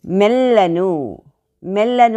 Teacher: మే అనేది వెనకాల వచ్చినటువంటి ద్విత్వాక్షరం మూలంగా గురువు అయింది